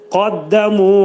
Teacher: Qafın məxrəcindən çıxıb tez dəlilin məxrəcinə giririk. [Musiqi] Burada ə iki səs qədər uzadılır.